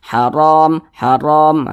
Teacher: maka dia dibaca tebal dibaca tafkhim sehingga pangkal lisan kita atau Pangkal lidah kita itu naik terangkat ke atas ketika Kita mengucapkannya ditebalkan